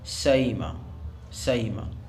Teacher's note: اس طرح پڑھا جائے کہ حمزہ کی بو بھی باقی رہے اور ہلکی سی بو یا کی بھی آ جائے، تو یہ بین بین قریب کہلائے گا، چنانچہ اس کو پڑھا جائے گا سئیمہ سئیمہ، تو یہ بین بین قریب ہے۔